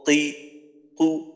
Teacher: ওইটাই হলো তিন নাম্বার মাখরাজ বা হলো শেষ চার নাম্বার মাখরাজ জিহ্বার গোড়া তার বরাবর উপরের তালুর সঙ্গে লাগাইয়া দুই নুক্তাওয়ালা কফ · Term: 2 নুক্তাওয়ালা কফ